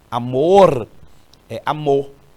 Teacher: nós aqui no Piauí também utilizamos essa pronúncia sem o r